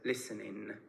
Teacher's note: in Irish English uh this NG sound is pronounced as n